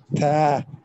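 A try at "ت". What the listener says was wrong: Brother, your ta needs to be a little bit cracked because when you say it sounds like tha, tha, where it is a very solid word, ta, ta. See the picture? Ta. It's like that. Ta.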